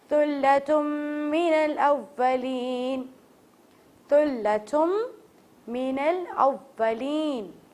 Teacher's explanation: یہاں پر ہمیں میم مشدد پر غنہ کرنا ہے اور تا کو تا کی طرح پڑھنا ہے